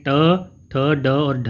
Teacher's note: ट ठ ड और ढ जो ध्वनियाँ हैं यह मूर्धन्य ध्वनियाँ कहलाती है।